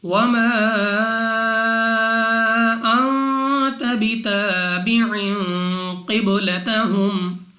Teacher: قاف مستعلیہ میں سے ہے، موٹا پڑھیں گے منہ اور آواز کو کھول کر